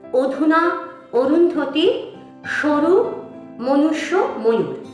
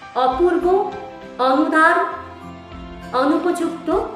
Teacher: প্রত্যেকটাতেই উচ্চারণ হচ্ছে ও এর মত অর্থাৎ অটা সংবৃত অ এর মত উচ্চারণ হচ্ছে